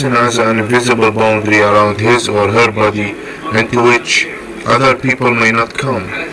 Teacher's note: you're kind of making your tone a little higher near the end of the sentence